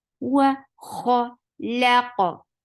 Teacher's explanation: Kha is heavy, and the sound is short.